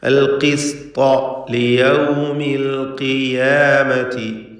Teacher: ഇവിടെയും ഖാഫ് മക്സൂറായ ഖാഫുണ്ട്, കുറഞ്ഞ തഫ്ഖീം അതിന് കൊടുക്കണം.